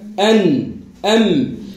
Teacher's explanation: لو تعطيها حقها تقول هك أن أم تلقى قوة الضغط بتاع الصوت في الخيشوم · إذن عند التصادم الصوت منقسم إلى قسمين جزء فموي وجزء خيشومي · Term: الغنة